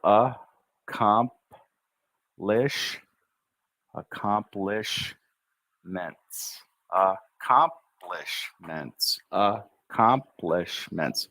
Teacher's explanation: in this word, it's almost as if that first C we don't say. We say accomplish, accomplishments, accomplishments, accomplishments.